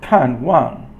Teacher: Kan is fourth tone, and then wang is usually fourth tone, but here it's just neutral.